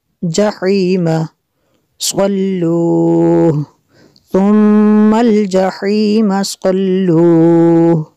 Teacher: صاد کو پر کرنا ہے